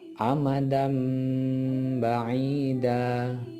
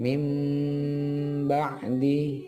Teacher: suara nun sukun atau tanwin diubah kepada suara mim terlebih dahulu dengan merapatkan kedua bibir serta diikuti dengan suara dengung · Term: iqlab